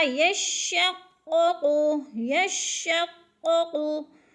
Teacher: दोनों कॉफ पुर हैं और पुर करके पढ़ेंगे यानी मोटा करके पढ़ेंगे